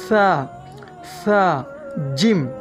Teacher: সা উচ্চারণ করতে সামনের দাঁতের উপরের দাঁতের সাথে জিহ্বা একটু বের হয়ে সেখানে ওই দাঁতের সাথে জিহ্বাটি লাগবে।